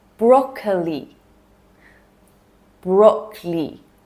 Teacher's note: Okay, here again, we shorten the word by removing the middle part. So we're ditching the O sound in the middle.